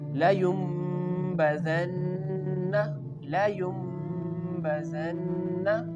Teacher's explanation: Again the Noon sound changes into the Mim sound.